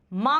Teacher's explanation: जैसे अनुनासिक टाइप होता है ना, मां। यदि हम नाक बंद कर लेंगे तो मां उच्चारण नहीं बोल पाएंगे हम सही से, तो ये होता है नासिक।